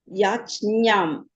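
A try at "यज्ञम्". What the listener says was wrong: So not nya. Don't make the tongue at the dental. It will become na and a year, not nya. It's nya. The tongue should go to the soft palate.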